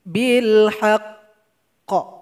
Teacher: huruf qaf mesti kita kasih qalqalah dan kita tahan dulu 2 detik baru kita pantulkan. Jadi bil haqq.